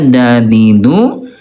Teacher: huruf th dal dan ta keluar dari ujung lidah dan gigi seri atas lisan ma usul ujung lidah yang bertemu dengan pangkal gigi sari atas nah di sini bunda ya ujung lidah ayah bunda disentuhkan dengan pangkal gigi ini atas ya da di du ay bunda ta, ti dan tu sama di sini ayah bunda ya. · ujung lidah yang bertemu dengan pangkal gigi seri atas